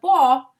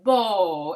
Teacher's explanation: And you can see that again we have the b sound and we have a diphthong, O. It's kind of the O sound that has a little bit of U at the end